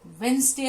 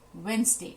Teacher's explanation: जैसे प्लम्बर एक शब्द है कि जो आप नल ठीक करवाने वाला बंदा आता है उसको प्लम्बर कहते हैं, लेकिन वो प्लम्बर नहीं है, वो प्लमर है। वेडनेसडे नहीं होता, वेंसडे होता है, जिसमें डी साइलेंट है।